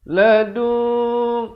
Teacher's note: ikhfa iaitu kita samarkan saja bunyinya di antara nun dan kaf, kadar panjang 2 harakat. Nak kata nun pun tidak, kaf pun tidak.